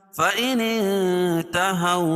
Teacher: اس لیے کہ نون ساکن کے بعد حروف اخفاء کے 15 حرفوں میں سے تا ہے، تو یہاں ناک میں آواز کو چھپا کر پڑھیں گے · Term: اخفاء حقیقی